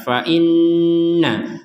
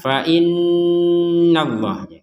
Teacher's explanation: Nun bertasydid ini harus kita dengungkan ya, dua harokat